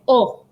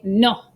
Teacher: the o is pronounced the same as the english o but shorter